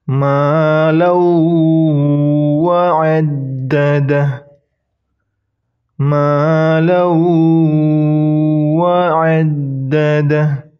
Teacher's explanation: Kemudian huruf tanwin bertemu dengan huruf waw. N-nya dihilangkan, langsung masuk ke waw. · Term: idgham bigunnah